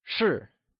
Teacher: 是 is pronounced using a falling tone, or the fourth tone